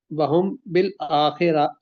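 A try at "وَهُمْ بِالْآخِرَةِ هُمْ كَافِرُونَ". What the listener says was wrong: نہیں را کو لمبا نہ کرے، وَهُمْ بِالْآخِرَةِ.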